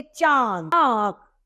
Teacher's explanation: ये सभी अनु स्वार के उदाहरण है दूसरा है अनु नासिका इसे मुख और नाक दोनों से बोला जाता है इसकी ध्वनि मुंह और नाक दोनों से निकलती है